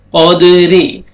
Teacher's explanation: دال ساکن ہے، قلقلہ کریں گے، ڈبل ساؤنڈ آئے گا۔ قد، را کے نیچے کسرہ، را کو باریک کر کے پڑھیں گے